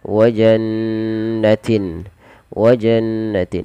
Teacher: mimnya dibaca dengan jelas tanpa ada penahanan Kemudian pada lafal wannatin ditahan pada lafal bunyi Nun berharakat tasdid karena di sini ada bacaan gunah